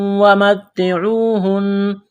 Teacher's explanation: واو ساکن سے پہلے پیش ہے، حروف مدہ واو ہے، ایک الف کے برابر کھینچنا ہے